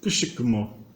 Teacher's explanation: Quando a consoante S se encontra com um I, né, o S vira com I, ele automaticamente se palataliza, ele vira Shi.